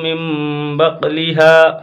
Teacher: یہاں پہ قلب ہوگا، نون کو میم سے بدل کر پڑھیں گے۔